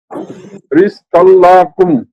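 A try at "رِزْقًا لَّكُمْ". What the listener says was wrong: লাকুম, এই লা টান হবে না, টান ছাড়া বলেন। রিজকাল লাকুম।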